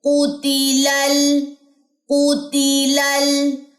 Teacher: جب آپ نے جوائننگ دینی ہے دونوں لام کی تو یہاں پہ کلکلا نہیں کرنا